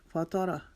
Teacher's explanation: تا کو موٹا پڑھیں گے, را کو موٹا پڑھیں گے کیونکہ را کے اوپر زبر ہے. فاتارہ, اس کو فاتح را نہیں پڑھیں گے.